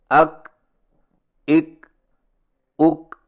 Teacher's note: اور کاف کی ادائیگی کا صحیح طریقہ یہ ہے کہ زبان کی جڑ کو تالو پر مضبوطی سے اس طرح لگائیں کہ آواز کے سختی سے رکنے کے فوراً بعد معمولی سی گھساہٹ ہو